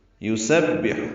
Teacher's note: سین صفیر کی آواز، سیٹی کی آواز سے پڑھتے ہوئے با سے ملانا ہے، ہا وسط حلق سے ادا کرنا ہے۔